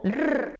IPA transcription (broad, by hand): r